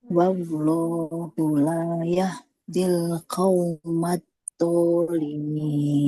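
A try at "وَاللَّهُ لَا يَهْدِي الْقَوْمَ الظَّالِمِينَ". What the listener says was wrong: Masih do. Coba Ibu. Az-zalimin. Ujung lidah kita itu menempel ke ujung gigi seri atas. Zo.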